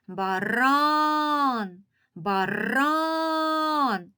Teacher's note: слово і визначити який склад наголошений баран баран чуємо що більш з більшою силою голосу вимовляється другий склад